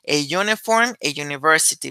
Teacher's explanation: el primer sonido de estas palabras de muchas otras más es y ese sonido se considera semiconsonante